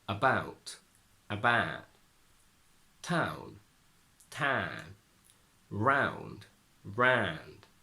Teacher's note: The diphthong ow turns into a very long open ah.